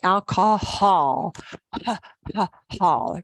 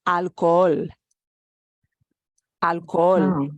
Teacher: we just draw out the oh